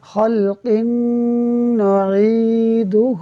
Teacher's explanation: یہاں قاف کے نیچے 2 زیر کی تنوین ہے اور 2 زیر کی تنوین کے بعد نون حروف یرملون میں سے ہے، لہٰذا ادغام ہوگا، یعنی ہم غنہ کر کے پڑھیں گے